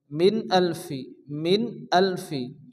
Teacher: নুন সেকেনের পরে এখানে এসারে হালকির হামজা আসছে কোন গুণ হবে না তাড়াতাড়ি করে পড়তে হবে